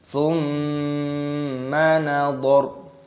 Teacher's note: Mim tasdid hukumnya dibaca gunnah, artinya berdengung.